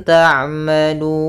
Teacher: pada lafal lun di sini ada bacaan mad alit lukun. Panjangnya boleh dua harakat, boleh empat harakat dan boleh pula enam harakat